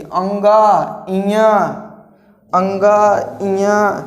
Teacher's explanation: नाक के बल से बोले जाते हैं, इसीलिए इन्हें क्या बोला जाता है, अनुनासिक